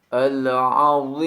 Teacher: ucapkan huruf bo dengan menempelkan punggung ujung lidah pada ujung gigi seri atas dengan sifat itbaqnya, dan dipanjangkan boleh 2, 4 sampai 6 harokat karena merupakan kaidah mad arid lis sukun.